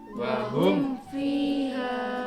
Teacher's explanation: mem sukun bertemu selain mem dan ba, maka bacaan idhar Jelas. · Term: idhar syafawi